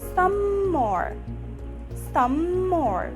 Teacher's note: the first word ends with m sound and the second word start with the same m sound so all you need to do is to keep the airflow among the two words